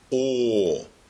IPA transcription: ɔː